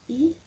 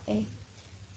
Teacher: Disebut vokal tak bundar karena bentuk mulut tidak membundar melainkan melebar pada mengucap vokal tersebut,